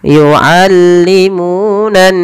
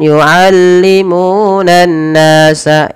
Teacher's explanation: ditahan dahulu ketika melafalkan nun berharakat tasydid, jangan buru-buru. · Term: gunnah